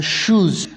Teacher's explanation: आप लोग देखें कि हमारा जो टंग है वो जो टीथ रेज है या एल्वेलर रेज है उसको टच नहीं करता, बल्कि उसके करीब जाता है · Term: पोस्ट एल्वेलर